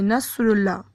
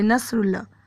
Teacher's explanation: اگر ہم اس میں صاد کے مخرج کو ادا نہیں کرتے تو اس میں سین کی آواز آتی ہے